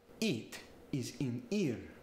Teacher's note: when he hits each consonant there's a short burst of air it's very staccato sounding